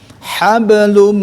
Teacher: Nah, lalu lum domah tanwin masuk kepada mim, yaitu masuk ke kelompok al khayshum yang harus ditahan ya, dengan 2 atau sampai 3 ketukan